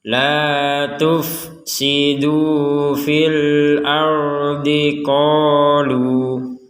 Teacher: Kalau kita berhenti di qalu walaupun di atasnya ada harokat bendera, maka tetap ini dibaca dua harokat.